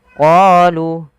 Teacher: panjangkan huruf qa 2 harakat karena pada lafal qa ada bacaan mad tabi'i, yaitu ditandai dengan huruf qa yang bertemu alif setelahnya.